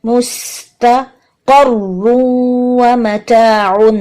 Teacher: یہاں پہ بھی ادغام کیا ہم نے غنہ کے ساتھ. رو مشدد جو ہے اس کو اچھا سا ادا کرنا ہے اور رو کو موٹا رکھنا ہے. میم پیش منہ کے بعد سین کے مخرج پہ جائیں.